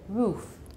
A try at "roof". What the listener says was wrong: Look at my mouth. Roof. Okay, not. You're making it sort of a Chinese R, and it's not R, it's R, roof.